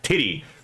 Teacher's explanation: The only difference is that your vocal box, your vocal cords are activated in the d sound, but not the t sound. So we don't have any diacritic there for that, so it's just a t sound.